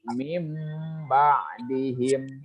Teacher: Jadi si nunnya diganti dengan mim di sana. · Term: iklab